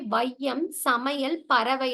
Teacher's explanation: அப்போ ஒரு சொல்லோட முதலில் வரும்போது மட்டும் அது வந்து 1 1/2 மாத்திரை அளவில் ஒலிக்கும் அப்படின்னு சொல்றாங்க. ஐகாரம்ன்றது சொல்லோட முதலில் வரும்போது 1 1/2 மாத்திரை அளவிலும், இடையிலும், இறுதியிலும் வரும்போது 1 மாத்திரை அளவில் குறுகி ஒலிக்கும் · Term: ஐகார குறுக்கம்